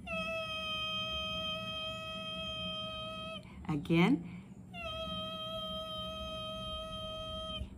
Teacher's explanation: this is a high pitched e sound we hold for three to five seconds